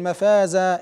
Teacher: فالمنون المنصوب يبدل الفا عند الوقف